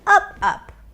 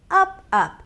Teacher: And notice how I go higher in pitch.